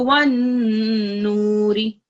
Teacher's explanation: So keep that noon sound in your throat for longer. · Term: nasal sound